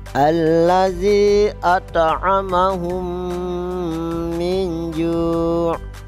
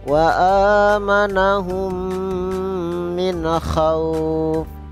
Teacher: Maka cara membacanya memasukkan huruf mim sukun atau mim mati ke dalam huruf mim disertai gunnah. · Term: idgham mimi